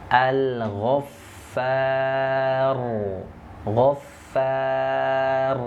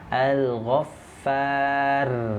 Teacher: Nah, ro-nya langsung ditebalkan. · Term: dibaca tebal